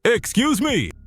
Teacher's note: Slight rise in tone. Polite curiosity.